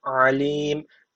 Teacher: Bir Elif uzatarak duruyorum ve hadır usulü okuduğum için sadece bir Elif uzatmalıyım daha fazla uzatamam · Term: meddi arı